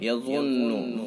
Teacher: ضا حروف مستعلیہ میں سے، اس لیے اس ضا کو پر پڑھیں گے، اور نون مشدد ہے لہذا حرف غنہ ہوگا۔